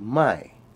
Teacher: for negation you uh use the word my it's a falling tone